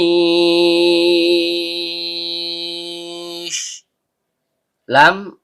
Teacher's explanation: Lam, ujung lidah bertemu dengan langit-langit bagian depan.